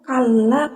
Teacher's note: lam yang pertama itu tidak usah dibaca, langsung masuk ke lam yang kedua. Jadi cara bacanya itu langsung saja kalla kayak gitu, dibacanya secara diidghamkan.